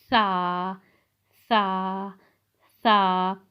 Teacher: सा जो है ज़ुबान का सिरा और ऊपर के दांतों के अंदरूनी किनारे से अदा होता है। यानी जब अपना ज़ुबान का सिरा, हम अपनी ज़ुबान का सिरा और ऊपर के दांतों की अंदरूनी किनारे से जब लगाते हैं तो सा अदा होता है।